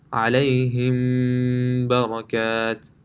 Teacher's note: if after meme sakin a ba comes, then there will be ghunna on the meme sakin